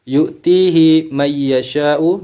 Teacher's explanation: nun sukun bertemu dengan ya, hukumnya idgham bi gunnah